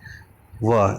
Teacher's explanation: स्थान है दंतोष्ट संतोष का मतलब दांत भी और होंठ हुई दांत और होठों की सहायता के बिना हम वह नहीं बोल सकते हैं